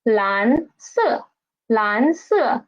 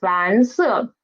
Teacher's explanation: It rises up, the second tone rises up, and then at the highest pitch it just fall down.